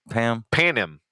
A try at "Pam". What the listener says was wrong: The N is silent.